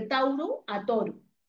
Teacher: El diptongo au se transforma a la o de Tauru a toru.